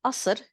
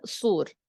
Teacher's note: in Lebanese, as we pronounce it, swapping the qaf for a glottal stop